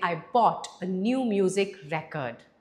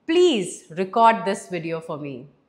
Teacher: Because in record, it's a noun. And in noun, we put stress on the first syllable. Whereas record, it is an action, it's a verb. And when it comes to verb, we put the stress on the second syllable.